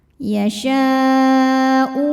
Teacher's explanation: Mad tabi'inya alif didahului fathah, kemudian hamzahnya u ada pada kata liman yasha'u. Maka shinnya dipanjangkan, boleh 4 boleh 5 harokat. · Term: mad wajib muttasil